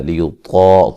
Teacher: طا کو موٹا ادا کریں گے